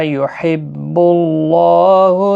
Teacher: اللہ کا لام زبر کی وجہ سے ایک الف کی مقدار کے برابر کھینچ کر پڑھا جائے گا، اور لام پیش کی وجہ سے پر بھی پڑھا جائے گا۔